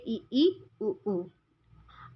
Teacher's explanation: जिन स्वरों के उच्चारण में मुख द्वार लगभग बंद रहता है